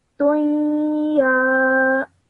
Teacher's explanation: when you join the ta to the ya, you have to produce a nasal sound of 2 seconds in between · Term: idgham